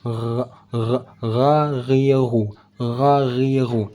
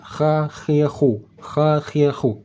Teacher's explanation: Intinya ghain cara bacanya seolah bergetar, kalau kha seolah-olah seperti terkerok, dikerok.